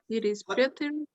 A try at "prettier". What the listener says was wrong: Prettier. Yeah,